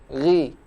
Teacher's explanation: Apabila huruf ghain berbaris kasrah dibaca tipis.